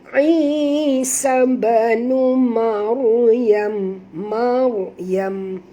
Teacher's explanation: Ra apabila dia mati huruf sebelumnya baris atas kena baca tebal